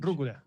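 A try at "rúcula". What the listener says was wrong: Okay, just roll the R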